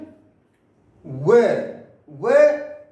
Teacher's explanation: व ऐसा वर्ण है जो दंतोष्ठ से बोला जाता है, दंत और ओठों से बोला जाता है